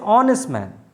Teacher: h is silent and so the pronunciation is o